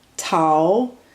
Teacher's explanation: the character on the left is Tao, second tone or rising tone, and it means to sift or to pan.